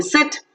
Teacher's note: is centralized front just above the half closed position, unrounded vowel